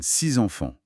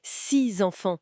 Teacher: Si le mot suivant commence par une voyelle, par exemple six enfants, le X se prononce Z. Ça donne six enfants. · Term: la liaison